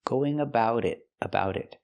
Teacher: we hear the T in about pronounced as a fast D